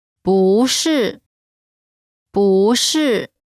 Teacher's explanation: When 不 is followed by a fourth tone, its tone changes from the fourth tone to the second tone.